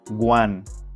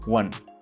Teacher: People used to start number with a G sound, so it sounds guan, and it is incorrect. You must use the UA sound.